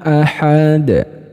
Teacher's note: masuk kategori Qalqalah Kubro sebab matinya bukan mati asli karena dia diwaakafkan jadi dalnya dipantulkan